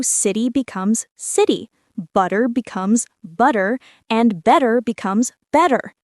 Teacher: The T sounds like a soft D. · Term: flapping rule